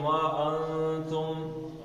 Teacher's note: نون کا غنہ کرنا ہے، ناک سے نکل